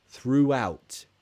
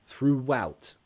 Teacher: It's linked with a W sound.